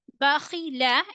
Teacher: And in this word, Bakhila, Kha will read with full mouth.